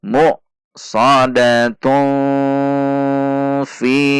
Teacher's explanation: ketika diwasal atau disambung kepada kalimat yang ada di depannya, maka ini dibaca tun. Dan tanwin ini di depannya ada huruf fa. Maka tanwinnya dibaca ikhfa. Ikhfanya ikhfa awsat.